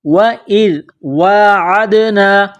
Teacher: ذال کو نرم پڑھنا ہے، زبان کا سرہ تھوڑا سا باہر نکالیں گے